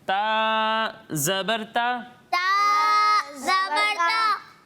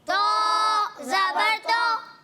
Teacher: جب ہم تا کی ادائیگی کریں گے تو اسے باریک پڑھیں گے، اور جب ہم طا کی ادائیگی کریں گے تو اسے موٹا کر کے پڑھیں گے، کیونکہ طا بھی حروف مستعلیہ میں سے ہے.